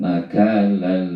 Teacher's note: Nakalal itu adalah tanwin bertemu huruf lam, maka itu dihukumkan idgham bila gunnah, ya. Jadi tanwinnya masuk ke dalam huruf lam, tanwin masuk ke dalam huruf lam, maka pengucapan tanwinnya tidak didengungkan. Nakalal, ya, jangan didengungkan karena namanya idgham bila gunnah.